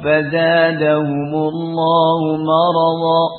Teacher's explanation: Ra yang di fathah dibaca tafkhim. Kemudian juga ketemu dengan wad, ya, yang juga huruf isti'la dan itbaq.